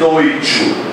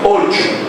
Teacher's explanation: Aí o que é que você faz? Você reduz esse ditongo, fica O, em vez de oi, tchu. Você não diz oi, tchu, você diz ocho.